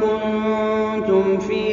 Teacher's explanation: میم ساکن کے بعد حرف فا آیا ہے تو یہاں پر اظہار ہوگا، یہاں پر میم کا اظہار ہوگا۔ فی میں یہ یا مدہ ہے، مد طبیعی ہوگا۔